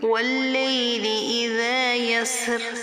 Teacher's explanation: سین کا مخرج ادا کریں گے سیٹی کے ساتھ، اور را یہاں پر ہم اس کو باریک پڑھیں گے۔